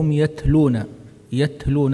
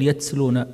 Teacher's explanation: التاء ساكنه الهمس لا تجعله لا تجعل فيه صوت الصفير لا تقل يتسلون يهلون وهم يتلون الكتاب كذلك قال الذين لا